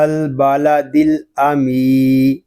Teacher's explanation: یہاں میم کو ہم ایک الف تک کھینچ کر پڑھیں گے کیونکہ یہاں یا مدہ ہو رہا ہے